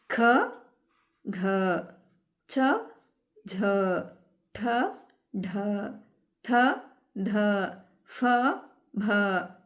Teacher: ಹೆಚ್ಚು ಉಸಿರಿನಿಂದ ಉಚ್ಚರಿಸ್ತೀವಲ್ವಾ ಹಾಗಾಗಿ ಇವು ಮಹಾಪ್ರಾಣಾಕ್ಷರಗಳು